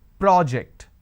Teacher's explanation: when I am stressing on the first syllable, it becomes a noun. That means, please submit the project.